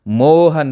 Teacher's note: जैसे मोहन, तो मो के बाद में हमने स्ट्रेस दिया, बीच में कुछ गैप रहा, ठीक है, तो इसको हम कह सकते हैं ये प्लूत का जो है सिंबल है, चिन्ह है, मोहन। तो हमने मो के बाद जो है ज़्यादा स्ट्रेस दिया है, हन को बाद में बोला है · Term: प्लूत स्वर